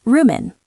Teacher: room on is commonly blended together and may sound like roomin'.